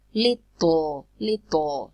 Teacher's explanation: we say that the plosive is released laterally